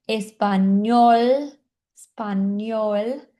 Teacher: o L lá na ponta da língua